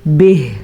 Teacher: وقف کی وجہ سے ہا کی آواز آنی ضروری ہے